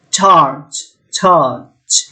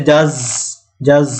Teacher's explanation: ইট begins like প্লজিভস ends like ফ্রিকেটিভস। তো প্লজিভ প্রথমটা মুখ বন্ধ হয়ে যাবে, আর শেষ হবে ফ্রিকেটিভের মতো, মানে ঘর্ষণের মতো, মাঝখান দিয়ে বাতাস বের হয়ে আসবে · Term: এফ্রিকেট